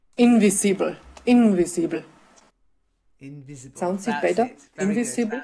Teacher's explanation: not too much stress on the in invisible